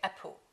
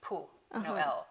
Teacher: most Chinese people don't use the final L, and they say apple.